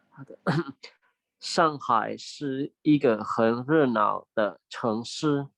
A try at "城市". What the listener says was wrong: 城市。 诗nya ada 4, yang lainnya udah bagus ya. 城市，城市 itu kota, 诗nya memang ada 4 ya. 上海是一个很热闹的城市. 热闹, dia sebenarnya ada 4 teman-teman ya. Tapi nanti kalau teman-teman ketemu ada yang dia NAO-nya itu nada 5, jadi bacanya pelan-pelan, itu nggak apa-apa ya.